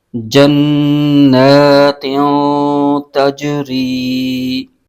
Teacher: جیم میں قلقلہ ہو رہا ہے